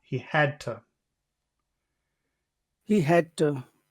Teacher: Instead of to, you can say duh.